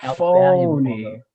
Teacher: You stretch out the first syllable